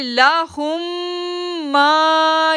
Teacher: آگے ہم پڑھیں گے لام زبر لا ہا میم پیش ہم، میم جزم کو سائلنٹ کر دیں گے، میم تشدید کو ریڈ کریں گے · اب دیکھیں ما کو کھینچا 2 سیکنڈ کے لیے، پھر ہم نے شین کو جو ہے وہ 6 سیکنڈ کے لیے کھینچنا ہے کیونکہ شین کے اوپر مد ہے